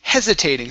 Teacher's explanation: so our stress is at the very beginning